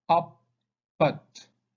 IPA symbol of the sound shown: ʌ